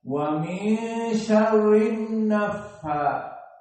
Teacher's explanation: Pertama hamzatul wasl, kedua lam asyamsiyah, maka langsung kepada nun. Dan nun di sini ditasydidkan wujubul gunnah.